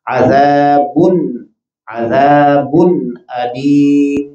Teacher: یہاں نون تنوین کو ظاہر کر کے پڑھا جائے گا